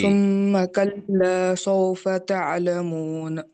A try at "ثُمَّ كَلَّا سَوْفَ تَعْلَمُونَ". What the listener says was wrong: یہ سو جو ہو رہا نہیں، یہاں پہ واو لین ہونا، ثم کلا سوف، سو نہیں، سوف تعلمون، کیسے پڑھیں گے؟